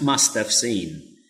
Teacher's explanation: So I pronounce must have because I just use the weak form of the verb have as of. So I pronounce must have seen.